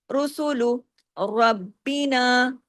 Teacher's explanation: یہاں بھی را ہیوی ہوگا، زبر کے ساتھ ہے. با یہاں ڈبل ہوگا، تشدید کے ساتھ ہے، باریک.